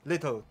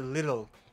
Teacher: 齿龈闪音，就是舌头碰一下牙龈就放开